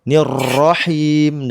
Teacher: Cuman rnya jangan getar kayak motor.